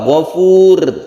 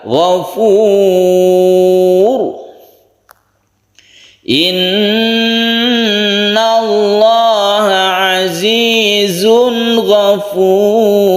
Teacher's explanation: kemudian ditambah lagi rokoknya Rokoknya ini ditebalkan karena sebelumnya ada Doma cara menebalkan itu bibir kita agak mencucuk